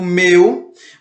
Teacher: Ou seja, a vogal ela sempre será mais presente, ela será sempre uma letra mais forte do que a semivogal, não importa a posição dela. Então, quando eu digo meu, vocês percebem que o E fica mais forte e o U fica mais fraco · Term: ditongo decrescente